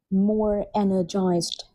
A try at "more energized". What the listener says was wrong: Or if you say more like American, that'd be Z and that'd be the sound at the end. But either ways, you haven't got that ending sound.